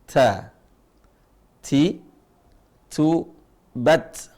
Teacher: kemudian di atasnya itu gusi dagingnya tempat tumbuhnya gigi itu gusi nah ujung lisannya ketemu dengan gusinya bukan giginya